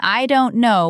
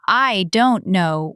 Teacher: instead of saying, I don't know with a clear voice, it comes out as, I don't know with a creak at the end. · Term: vocal fry